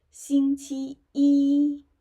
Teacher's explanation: First tone, first tone, first tone, yeah, which is the highest pitch for each character of this syllable.